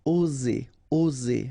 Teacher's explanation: Remember, only one S between two vowels, so the sound is Z.